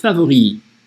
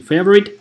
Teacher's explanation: Т на конце не ставьте, не favorite, а favori.